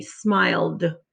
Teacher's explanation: because the l you can feel the vibration is voiced so the e d makes the d sound